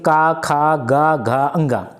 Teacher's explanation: का ख ग घ अंग ये कंठ से होगा